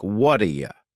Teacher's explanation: This is really typical of American English, where a T that's surrounded by vowel sounds is going to change to a D. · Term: flapped T